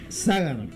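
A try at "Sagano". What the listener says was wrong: Y en Ságano, sin acento, sin, por favor, no, no ponga acento en ningún lado. Ságano.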